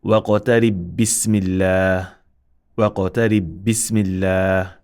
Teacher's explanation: Now if you link, the qalqala will drop because you are merging.